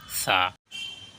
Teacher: জিহ্বার আগা সামনের দাঁতের সামনা সাইডে লাগাইয়া উচ্চারিত হয়।